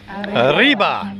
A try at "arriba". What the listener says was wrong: Come on, you have to say with a lot of emphasis, okay? Arriba.